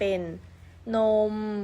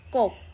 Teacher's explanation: พอจบเสียงบอใบไม้เสียงจะถูกตัดขาดทันทีและลากต่อไม่ได้ค่ะ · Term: คำตาย